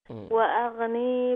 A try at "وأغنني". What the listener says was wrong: وأغنني دو نون ہے نی نہیں ہے، پہلے نون کے بعد یا نہیں ہے، دوسرے نون کے بعد یا موجود ہے.